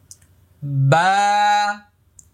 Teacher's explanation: বা এক আলিফ পরিমাণ লম্বা হবে। মুখটা খালি ফাঁকা হবে।